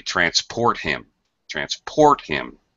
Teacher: syllable as a verb I had to transport him transport him you stress the second syllable